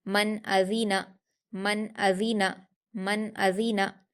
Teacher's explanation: नून साकिन के बाद हमजा है जो कि हुरूफ इजहार में से है, इसलिए इसको नून साकिन की आवाज़ को जाहिर करके बगैर गुन्ना के जल्दी पढ़ेंगे। हमजा पर हरकत जल्दी पढ़ेंगे, जाल पर हरकत जल्दी पढ़ेंगे, नून पर हरकत जल्दी पढ़ेंगे।